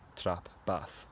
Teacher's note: the vowel in trap is the same as the vowel in bath they're both something like ah